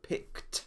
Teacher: if the last sound of the infinitive is unvoiced it is pronounced t as in picked